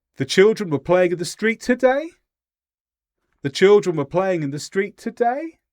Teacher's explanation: Notice how I had up intonation and that kind of indicated a question like I wasn't sure if it was true. I wanted the person I was speaking to to reply and confirm if it was true or not true.